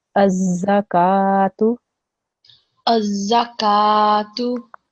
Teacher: when I glue the alif to the za, you can hear that stressing that sound, that joining sound of the two letters.